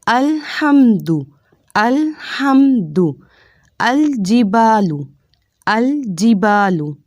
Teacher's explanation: زبان کا کنارہ اوپر والے دانتوں کے مسوڑے سے لگائیں گے تو لام اور نون ادا ہوگا۔ · تو لام کا مخرج ادا کرتے ہوئے احتیاط کیا کرنی ہے کہ ہم نے لام کو موٹا کر کے نہیں پڑھنا، نارمل پڑھنا ہے جیسے عام زبان میں لام بولا جاتا ہے، اور اسی طرح حرکت والے لام کو لمبا بھی نہیں کرنا اور اس کو جھٹکے سے بھی نہیں پڑھنا۔